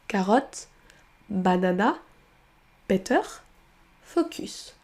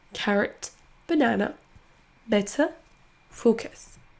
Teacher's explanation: on aura tendance à remplacer le son schwa par la lettre qui est écrite